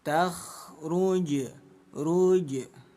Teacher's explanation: Jadi pantulkan bunyi jim kecil sedikit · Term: qalqalah sugro